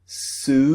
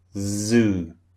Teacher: So unvoiced is s the first sound. Voiced is zz the second sound. So s zoo. This is the big difference between the two sounds. · You can feel the difference in the voiced and the unvoiced sound.